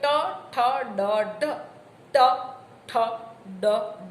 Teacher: એટલે તમારી જીભના ટેરવાનો નીચેનો ભાગ તળ, જીહ્વાગ્ર તલ જ્યારે તાળવાના મધ્ય ભાગને સ્પર્શે ત્યારે ઉત્પન્ન થતા વ્યંજનોને મૂર્ધન્ય વ્યંજન કહેવાય.